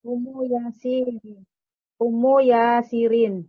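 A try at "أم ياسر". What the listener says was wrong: Iya, sahih. Hadihi Ummu Yasirin.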